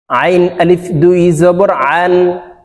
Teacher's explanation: আইনকে চাপ দিয়ে উচ্চারণ করতে হবে, আইনের মাখরাজ হলকের মধ্যখান থেকে উচ্চারণ হবে।